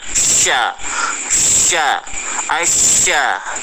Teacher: Jadi huruf sya itu makhraj hurufnya lidah bagian tengah itu dinaikkan ke langit-langit. Lidah bagian tengah itu dinaikkan ke langit-langit supaya jadi sya. Sama dengan kita mau ucap huruf iya.